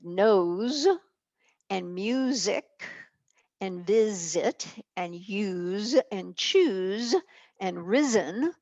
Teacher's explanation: Also in just regular old words like nose and music and visit and use and choose and risen, the S is sounding like a Z. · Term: Z sound